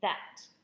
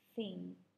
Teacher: they are both fricatives however one is voiced and one is voiceless the voiced sound is the one in that whilst the voiceless sound is the one in thing